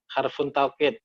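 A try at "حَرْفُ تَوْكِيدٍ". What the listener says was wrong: Harfu taukidin. Pokoknya kalau membaca huruf harfu nggak boleh fun. Harfu. namanya harfu taukidin. Harfu taukid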